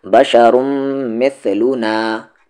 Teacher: میم پہ تشدید ہے، غنہ کریں گے، آواز کو ناک میں رکھیں گے